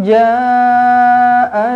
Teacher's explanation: ja panjanglah 4 atau 5 harakat, mad wajib muttasil.